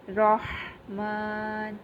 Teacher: میم کے اوپر کھڑی زبر آ رہی ہے جو ہم نے پڑھا ہے، اس کو ہم نے ایک الف کے برابر کھینچ کر ادا کرنا ہے